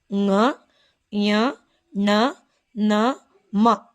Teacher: ಇವುಗಳನ್ನ ಮೂಗಿನ ಸಹಾಯದಿಂದ ಉಚ್ಚರಿಸಲ್ಪಡುವಂತಹ ಅಕ್ಷರಗಳು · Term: ಅನುನಾಸಿಕಗಳಲ್ಲಿ